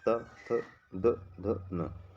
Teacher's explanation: ऊपरी दांतों के निकट से दंत होता है